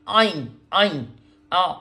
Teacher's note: آئین ایسے نکلتا ہے جیسے الٹی آ رہی ہوتی ہے انسان کو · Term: حروف حلقی